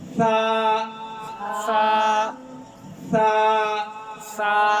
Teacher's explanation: کیا ہے, باریک اس کو موٹا نہیں کرنا. سا سا سا کا مخرج کیا ہے, زبان کی نوک اوپر دانتوں کے کنارے سے